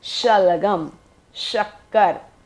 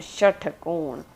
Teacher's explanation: जब श शलगम का कहते हैं तो श सीटी बजती है, लेकिन जब हम षटकोण का कहते हैं तो सीटी नहीं बजती। इसे पढ़ते हैं श, दांत और जीभ दबाकर श।